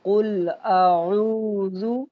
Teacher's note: بیٹا عین کو گلے سے نکالنا ہے